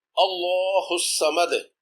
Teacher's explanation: وقف کی وجہ سے دال پر واضح قلقلہ ہوگا